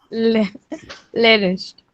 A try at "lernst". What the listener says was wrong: lernest नहीं, lernst.